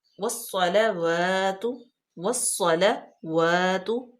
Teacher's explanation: واو جو ہے اس کو ہونٹوں کی گلائی سے ادا کرتے ہیں · سواد جو ہے وہ حروف شمسی میں سے ہے، تو اس لیے الف لام لام تعریف یہ سائلنٹ ہو جائیں گے